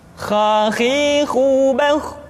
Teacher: Kha, pangkal tenggorokan. Diucapkan dengan mengalir nafas. Atau lebih praktisnya, pengucapan huruf kha persis terdengar seperti orang yang tidur dalam keadaan mengorok.